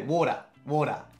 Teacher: water water oh well we do say water though actually no we use the American D sounds often and the British not pronouncing the r sounds